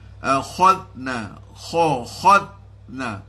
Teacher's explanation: Akhadna zal tu jangan akhaz. Ada qalqalah di situ tak mahu.